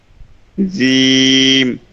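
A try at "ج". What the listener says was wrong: আরো শক্ত হবে। না, এটা হচ্ছে জিব্বার আগাটা আপনার দাঁতের সাথে আসতেছে, জিম জিম, মানে জিব্বার আগাটা এখনো লাগে লাগে নিচের দাঁতের সাথে, আর জিব্বাটা একদম মধ্যে নিয়ে যেতে হবে, জিম জিম।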